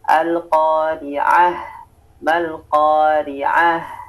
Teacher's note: Fokus kita pada H ya, dikeluarkan semua ya nafasnya dan suaranya.